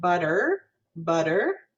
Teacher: so we know that that second vowel could be schwa and in america we might pronounce it butter butter and have more of that er color to it